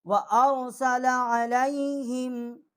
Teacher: آگے عین جو ہے اس کو بھی حلق سے نکالیں گے، عین حروف حلقی ہے